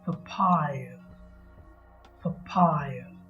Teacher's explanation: a p a y a p a p a y a it has three syllables the second syllable pie carries the main stress